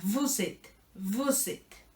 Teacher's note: la S suena, porque la S se conecta con la E del principio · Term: aleación